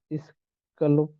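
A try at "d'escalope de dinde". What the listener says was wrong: এই যে পরের ওয়ার্ডের সাথে মিলায় পড়েন, দেশকালব দো দেশকালব দো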